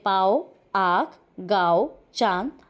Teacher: अनुनासिक की ध्वनि नाक और मुंह दोनों से साथ-साथ निकलती है